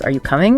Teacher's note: Rising intonation where your voice goes up at the end it's your go-to for yes no questions are you coming is